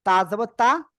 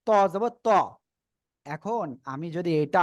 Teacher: তা সিম্পল ভাবে উচ্চারণ হবে চিকুন আওয়াজে হবে তা আর ত টা মোটা আওয়াজে